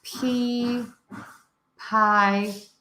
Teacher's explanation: it doesn't matter just pick one and stick with one um correct no vibration of the throat for the P